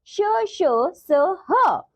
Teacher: ऊष्म व्यंजनों के उच्चारण से मुख से गर्म श्वास वायु रगड़ खाती हुई निकलती है, इसी कारण इन्हें ऊष्म व्यंजन कहते हैं।